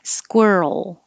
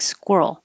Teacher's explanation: hold your tongue in the L position once it gets there so you can hear the L